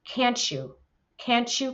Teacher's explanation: when words end with the letter t and is followed by a y it becomes a CH sound